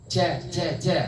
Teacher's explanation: Tengah lidah bertemu dengan langit-langit atas kalau Sya menyebar tapi kalau Jim ja itu ditahan nafasnya dia tertahan nafasnya enggak bocor